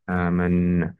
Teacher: pada huruf na terdapat Mad Thobi'i yang dibaca panjang dua harakat karena sama ada fathah yang berdiri di atas huruf alif atau